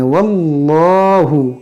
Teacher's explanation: اس میں جلال سے پہلے زبر ہے تو اس کو ہم موٹا کریں گے